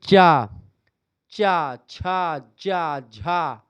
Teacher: जीभा मतलब कि जीभ का आगे वाला भाग। तालव्य मतलब कि तालु को टच करता है।